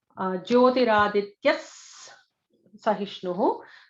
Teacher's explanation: So there is an extra sibilant before Sahishnu.